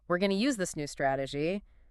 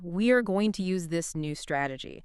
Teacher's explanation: You drop the pitch at the very end of the sentence. It signals I am delivering a fact. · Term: downward inflection